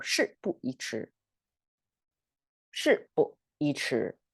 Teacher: And you have, for the efficiency of speaking, you don't have to fully pronounce it with a falling tone. You can just lightly touch it. We call it the fifth tone, kind of light tone.